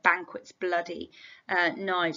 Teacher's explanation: note the way that we've got this plosive alliteration here banquet's bloody uh knives so quite harsh powerful violent sounding words